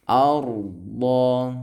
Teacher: Arda ra sukun, huruf sebelumnya berharokat fathah ya. Maka ini adalah tafkhim, tebal ya. Tafkhim itu tebal ya.